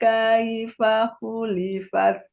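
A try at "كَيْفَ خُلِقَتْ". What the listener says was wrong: Kuliqat, kof hurufnya.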